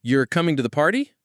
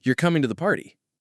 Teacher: A rising tone at the end of a statement can make it sound like a question.